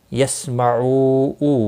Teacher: واو مدہ ہے، ایک الف کے برابر کھینچ کر پڑھیں گے۔ سین ساکن کو ہلانا نہیں، باقی کسی بھی حرکت والے حرف کو کھینچنا نہیں۔